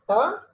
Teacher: When you pronounce ta, tip of the tongue touches teeth ridge. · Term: alveolar